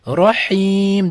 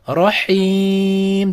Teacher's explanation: Ya'niki buni rohim deb 2 harakat cho'zsak bo'ladi, yoki rohim deb 4 harakat cho'zsak bo'ladi, yoki rohim deb 6 harakat cho'zsak bo'lar ekan. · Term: mad oriz